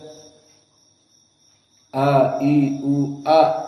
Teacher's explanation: Di Aqsa Alhalq. di yang paling bawah dari alhalq. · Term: hamzah